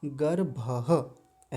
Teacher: ये पीछे जो विसर्ग है जो आधे ह जैसी ध्वनि देगा, जैसे आधा ह बोला जाता है ना, गर्भः ऐसा।